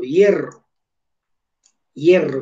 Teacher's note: mire que en la E es donde va la acentuación